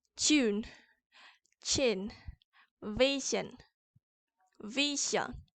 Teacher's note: And then we have palatals, which are raised by raising the front part of the tongue to the palate